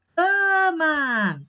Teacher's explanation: esse cã, ele é mais forte, né? Ele é a sílaba tônica.